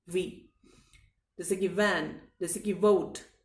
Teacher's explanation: जब आप वी वाला व बोलेंगे तब आप ऊपर वाले दांतों से अपने नीचे वाले होठों को दबाते हैं, वी, इस तरह से बोलते हैं, वी।